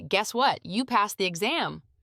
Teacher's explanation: That pause before the you passed the exam makes the whole thing feel more dramatic.